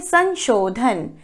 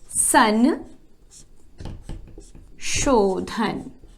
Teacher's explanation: अनुस्वार की जगह न की ध्वनि आ रही है। संन शोधन। यह क्योंकि आधा अनुस्वार है।